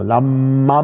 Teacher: Und zwar wird das M südlich der Toskana, also in der Toskana nicht, aber sobald sie südlich der Toskana sind oder auch westlich der Toskana, in Gesamt-Mittel-Süditalien und Sizilien automatisch gelenkt. Da haben sie immer ein langes M, wenn es zwischen Vokalen steht. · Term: Spontane Längung des M's